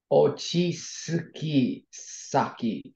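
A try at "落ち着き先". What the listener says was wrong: Perfect. So an ochitsukisaki is a location you can calm down in.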